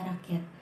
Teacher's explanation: konsonan glotal yang dibentuk oleh posisi pita suara sama sekali merapat sehingga menutup glotis. Konsonannya yaitu seperti bunyi K pada kata rakyat.